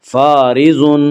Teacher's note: اس کا قاعدہ یہ ہے کہ را کے اوپر زبر اور پیش آئے تو را کو پر پڑھا جائے گا، را کے نیچے زیر آئے تو را کو باریک پڑھا جائے گا، یا را کے نیچے زیر ایسے را کو باریک پڑھیں گے۔ فارض، ضاد کو پر پڑھا جائے گا، ضاد حروف مستعلیہ میں سے ہے